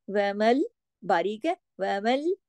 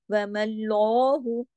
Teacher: वह देखिए, बारीक हुरूफ बारीक ही पढ़ने हैं, लेकिन अभी देखिए, वमल्लाहु, मीम तो बारीक है, लेकिन मीम पे जबर है और उसके बाद अल्लाह का नाम है, और जब अल्लाह का नाम आने से पहले किसी हर्फ पर जबर हो तो अल्लाह के नाम में जो लाम है उसे हैवी करके, मोटा करके पढ़ा जाएगा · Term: लाम जलाला